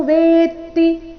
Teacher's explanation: ವೇತಿ ಇಲ್ಲಿ ವೇತಿ ಅಂತ ಇಲ್ಲ ವೇತಿ ತ ಕ್ಕೆ ತ ದು ಒತ್ತು ವೇ ಮೇಲೆ ಸ್ವಾಭಾವಿಕವಾಗಿ ಆಘಾತ ಬರಬೇಕು